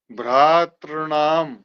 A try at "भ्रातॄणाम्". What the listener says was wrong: ता डबल हो रहा है, री डबल दीर्घ नहीं हो पा रही।